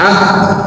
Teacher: Nah, sekarang huruf kaf. Kaf ini dia harus tertahan suaranya alias syiddah